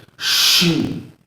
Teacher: اسی طرح شین ہے، شین کا مخرج یہ ہے کہ ہماری جو زبان کا درمیانی حصہ ہوتا ہے، بیچ والا حصہ ہوتا ہے، اسے تالو کے ساتھ لگانا ہے اور سختی کے ساتھ ادا کرنا ہے